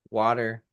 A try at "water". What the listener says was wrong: Yeah, but you're saying water wrong. It's water with a T. Water. No, no, it's oh God, it's not we say it's with a T, not with two D's.